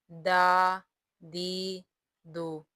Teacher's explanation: دال کا مخرج زبان کی نوک اور ثنایا اولیاء کے کنارے، یہاں سے دال ادا ہوتا ہے، دال زبر دا، دال زیر دی، دال پیش دو، دا دی دو۔